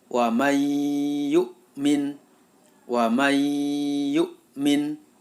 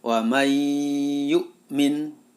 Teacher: karena ini bacaan Idgham Bighunnah maka suara nun sukun masuk ke dalam huruf ya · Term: idgham bi gunnah